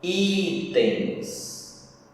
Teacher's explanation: O i é mais forte, paroxítona. Com o final ens.